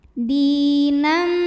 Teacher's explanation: Dal dipanjangkan dua harakat dinam kemudian ada hukum idgham bhunah karena ada tanwin fathah yang menghadapi huruf mim maka tanwinnya masuk ke mim dinam disertai dengung